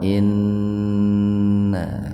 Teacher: nun bertasdid gunna itu mendengung, tahan dua ketukan